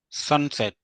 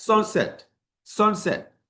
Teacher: You you have to raise the voice on the first syllable.